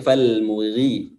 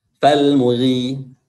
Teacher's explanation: Namun karena dia berharakat kasrah, maka ketebalannya akan sedikit berkurang. Jadi huruf-huruf tebal, dia tingkat ketebalannya juga berbeda-beda tergantung harakatnya. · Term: huruf ghain